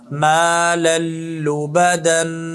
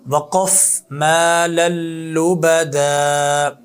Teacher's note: نون تنوین کو لام میں داخل کیا ہے، ادغام کیا لیکن بغیر غنے کے پڑھا ہے، جو دوسری قسم ہے ادغام کی، ادغام بلا غنہ، ادغام مال غنہ اور ادغام بلا غنہ، دونوں کی مثالیں واضح کر دی ہیں آپ کے سامنے۔